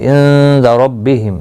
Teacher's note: نون ساکن کے بعد حروف اخفا کا دال آئے، اخفا حقیقی ہوگا، گنہ کے ساتھ پڑھیں گے